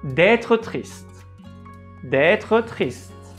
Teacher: you can drop your tone at the end of être and pronounce the E at the end. And so increase your voice again at the beginning of the next word, which is triste.